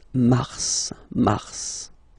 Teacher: normally final S is not pronounced in French. Okay, we've got some exceptions and this one is one of them. So mars, pronounce the final S, mars, mars.